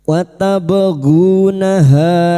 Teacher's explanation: ha fathah diikuti alif dua harakat matabi'i